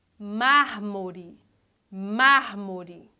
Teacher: a sílaba mais forte é mar. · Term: proparoxítona